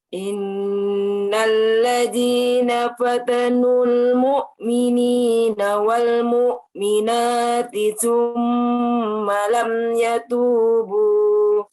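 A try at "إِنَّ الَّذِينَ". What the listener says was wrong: Tipiskan lagi huruf zalnya. Innalladzi. Ujung lidahnya keluarin sedikit. Innalladzi. Tipisin ya.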